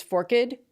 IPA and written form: fɔrkt (forked)